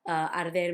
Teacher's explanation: Arder had the difficulty of the R's, that's soft, because it's between a vowel and a consonant